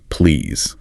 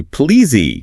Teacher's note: making it a soft Z sound, not a sharp S. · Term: gentle voiced Z